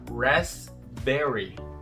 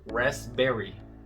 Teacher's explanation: Esse P não é pronunciado, raspberry. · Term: letra muda